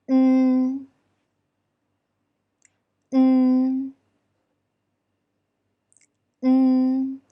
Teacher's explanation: When saying the alveolar nasal n, the tongue tip should press the upper alveolar ridge, and the upper and lower teeth are close to each other. N, n, n. And remember to keep your tongue position until you totally finish pronouncing the syllable.